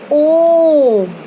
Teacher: जब हम ओम बोलते हैं तो हमारी जो आवाज है वो थोड़ी देर के लिए खिंचती है, यानी कि उसे बोलने में हमें अधिक समय लगता है। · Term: प्लुत स्वर